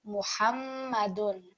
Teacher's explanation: we want that stress on the meme because of the shadda, and equally we also want to produce that nasal sound